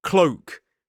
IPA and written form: kləʊk (cloak)